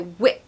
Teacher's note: the trick here is to do a really strong short eye so whip it's quite abrupt and harsh sounding which acts as a kind of contrast to the softer sounds